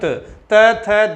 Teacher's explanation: त, थ, द इनका दंत है और ट का दंत नहीं है